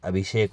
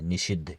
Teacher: दंत स के स्थान पर मुर्धन्य स हो जाता है यानी कि तीसरे स के स्थान पर दूसरा स हो जाता